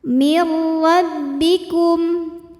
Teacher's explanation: Maka cara bacanya nunnya masuk ke ra, mir, tapi tidak ditahan, tidak didengungkan. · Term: idgham bila gunnah